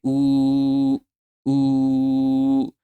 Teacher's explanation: when you say oo, the waw you're pronouncing, the waw of madda, your voice isn't ending at any point, any place